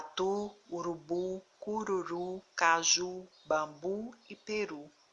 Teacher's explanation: nesse grupo de palavras que a última sílaba é pronunciada com mais força com mais intensidade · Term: sílaba tônica